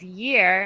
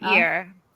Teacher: Make sure you say the Y, because sometimes when you say it, you say like ear instead of a year.